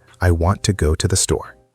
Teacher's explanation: Now the stressed words are want, go, and store. · Those are the important words, the words you really need to hear. And the unstressed words are I, to, and the. Those are softer.